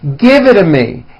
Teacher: example give it to me the only big change comes from the t's being pronounced as D's and this happens because the t's fall between two vowel sounds if you remember an American pronunciation when T's fall between two